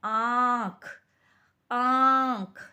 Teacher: यानी हमारा जब हम इस आँख शब्द को बोलते हैं तो नाक और हमारा बोलते वक्त मुंह थोड़ा सा खुलता है, तो हमें महसूस होता है कि ध्वनि जो है वो गले से भी आ रही है। यानी अनुनासिक ध्वनि गले और नाक दोनों से आती है